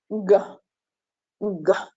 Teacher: The air is trapped for a short time and then breaks the obstruction with a slight explosion. In the case of g, g, the vocal cords are vibrating.